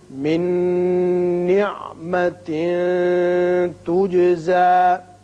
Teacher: لأحد عنده من نعمة تجزى نون ساکن کے بعد نون متحرک یہاں آ گیا، نون آ گیا یا نون کے بعد جب نون آ جائے تو ینمو میں سے ہے، ادغام بغنہ ہوگا.